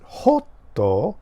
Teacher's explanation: Japanese pronounce it hotto, hot, with the long O sound, because that's how they write it in katakana.